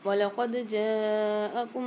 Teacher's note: قاف کو دال کے ساتھ ملا کے قلقلہ کر کے پڑھیں گے. یہاں پر دال میں ڈبل آواز نکلے گی اور قلقلہ والے حرف میں آپ لوگوں کو پہلے بھی بتا چکی ہوں.